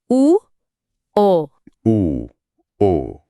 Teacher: इसीलिए ये वृत्तामुखी यानी गोल मुंह वाले स्वर हैं।